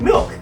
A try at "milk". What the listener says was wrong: Milk with an E.